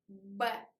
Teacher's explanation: when we say b, our lips are closed, b, and they are fastly open to make this sound b or p